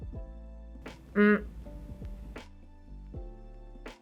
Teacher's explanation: It is usually represented as an n, but is said with the mouth closed and the sound coming out your nose. If it comes before an M, a P, or a B, it sounds like a m.